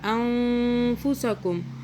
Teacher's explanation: نون ساکن پہ اخفاء کیا، نون کو چھپایا، زبان تالوں سے ٹچ نہیں کیا